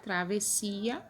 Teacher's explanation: eu sei que eu tenho dois ésses mas eu não ouço dois ésses eu só ouço um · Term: dígrafo